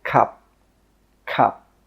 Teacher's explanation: When we say this word, we stop the air with that final P sound. We don't say 'cuP'.